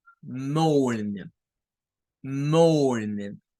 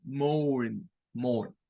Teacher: Una segunda pronunciación es hacer sonar este diptongo como O